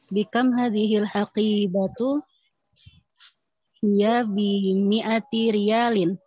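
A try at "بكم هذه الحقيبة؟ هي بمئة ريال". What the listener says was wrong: Ahsant.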